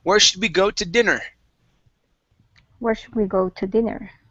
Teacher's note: we're gonna emphasize the beginning part of dinner